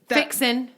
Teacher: In a word that ends with ing, they'll drop off the G.